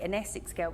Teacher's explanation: you can hear gemma collins there using that vocalized dark l on girls